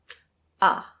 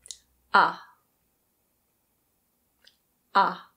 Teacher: This vowel is called the open-mid back unrounded vowel. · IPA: /ʌ/